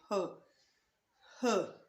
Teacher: then there is sound of H produced by glottis